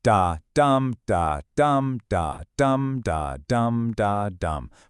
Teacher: it's an unstressed beat followed by a stress beat. Basically, think of a human heartbeat.